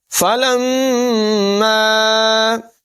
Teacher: میم مشدد میں غنہ کریں گے اور الف مدہ ہے، لمبا کر کے پڑھیں گے۔